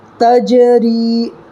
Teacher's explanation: جیسے تا جیم زبر تج، را یا زیر ری، تجری۔ جیم میں قلقلہ کرنا ہے، اس لیے کہ حروف قلقلہ کے 5 حرفوں میں سے جیم آ رہا ہے